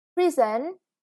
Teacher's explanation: Prison, yeah, the first syllable is stressed again.